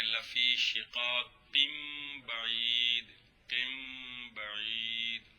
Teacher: نون تنوین ہے، بعد میں با آ رہی ہے، نون تنوین کو میم سے بدلائیں گے تو پڑھیں گے لفی شقاق بعید، قم بعید، غنہ بھی کریں گے